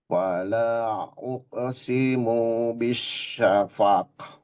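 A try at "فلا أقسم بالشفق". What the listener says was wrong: Uqasimu bish. Uqasimu bish. Si-nya gak boleh panjang. Fala uqasimu bisyafaq.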